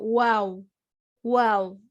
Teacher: अगर इस तरीके से अगर आपका वाव निकलता है तो वो वाव का मखरिज नहीं है। वाव का मखरिज ये है कि होठ ओ जैसे शेप में खुले, वाव कहते वक्त, ऐसे कहते हैं वाव वाव।